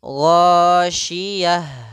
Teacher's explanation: Ada mengalirnya nafas ha